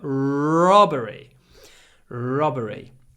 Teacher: When you pronounce this word, make sure you get a long r at the beginning. Robbery. And then a short o.